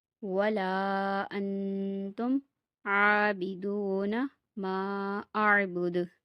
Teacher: دال پہ قلقلہ ہوگا آیت کرنے کی صورت میں